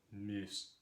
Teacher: that back vowel u gets run into I